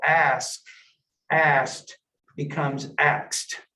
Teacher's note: Reversal of sounds. It's called metathesis. So in Appalachian English, and also I think we can say African American English, you have a reversal.